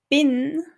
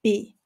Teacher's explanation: Zum Beispiel statt bin sage ich b. Das N am Ende wird weggelassen.